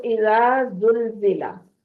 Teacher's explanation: जाल को बिल्कुल नरमी से अदा करना है और जा जो है वो सख्ती से अदा होने वाले हरूफ में से है। ठीक है, जाल नरमी से अदा होने वाले हरूफ में से है और जा सख्ती से पीटी वाली आवाज के साथ।